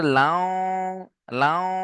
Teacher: তাহলে তানবিনকে ওয়াও এর সাথে মিলিয়ে একালিফ গুন্না সহ পড়তে হবে, একে ইদগামে নাকিস বলে।